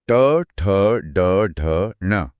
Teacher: ट बोलते ही जीभ झटके से पीछे लगती है। · यह सभी एम यानी मूर्धा से बोले जाते हैं। जीभ पीछे मुड़कर कठोर हिस्से पर लगती है। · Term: ट वर्ग